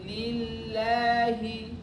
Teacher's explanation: Kalau tidak dialirkan biasanya orang bacanya gini. Alhamdulillahi, lillahi, terputus suaranya. Nah itu juga tidak boleh.